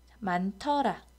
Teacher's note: 히읗과 디귿이 만나서 티읕으로 실현되고요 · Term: 거센 소리 되기